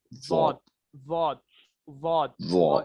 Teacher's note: जबान की करवट जब बाएं तरफ वाली ऊपर के 5 दाढ़ों से लगे तो इससे वॉद निकलता है। वॉद, वॉद, वॉद, वॉद, यानी जबान की कोर, जबान है कि जबान की जो कोर है वहां पे आपको जो है दाढ़ों को लगाना है, 5 दाढ़ों को जो है लगाना है आपका।